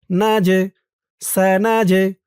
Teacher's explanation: এই জিমটা কলকলার হরফ ধাক্কা দিয়ে পড়তে হবে